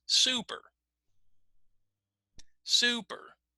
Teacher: It sounds louder. And the second part, not so clear, right? It sounds a little softer than the first one